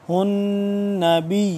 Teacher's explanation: نون زبر نا نون مشدد ہے، اس پہ غنہ ہوگا